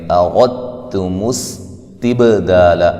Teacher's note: یہاں دال کا تا میں ادغام ہو رہا ہے، ادھر غنہ نہیں کریں گے